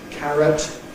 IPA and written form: ˈkærət (carrot)